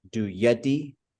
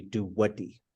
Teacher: It's a Y that changes to a W. If there's a rounded sound before it, which there used to be a bunch of them, like do yadi used to be do wadi.